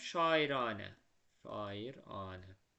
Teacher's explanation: Anədəki də a uzun tələffüz olunur.